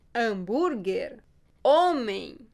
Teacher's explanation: Assim como em espanhol, o H é mudo no português.